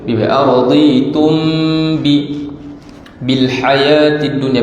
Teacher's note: Araditum bi, dengung situ dengan merapatkan bi.